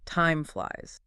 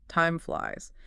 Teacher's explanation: Connect the M to the F.